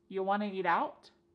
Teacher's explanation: We've dropped the question word completely.